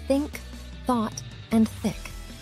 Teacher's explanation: this sound is similar to the voiced th but without vocalizing instead you just blow air through your teeth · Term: voiceless Dental fricative th